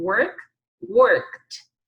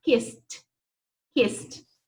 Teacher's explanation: Então, quando você colocar o ED, vai ter som de T.